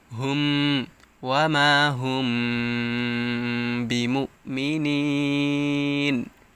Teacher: আমরা ওই যে একটা গুন্না করি নাকের ভিতরে, ওটা হচ্ছে কি নুন সাকিনে ইকফা, আর এটা হচ্ছে মিম সাকিনে ইকফা। মিম সাকিনের পর যখন বা হরফ আসবে তখন এটাকে মিম সাকিনে ইকফা বলা হয়, এবং একটু গুন্না করে পড়তে হবে এরকমভাবে